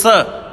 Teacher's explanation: इसको वास्तविक नाम इसका है दंत्य स, क्योंकि इसके उच्चारण दांतों से होता है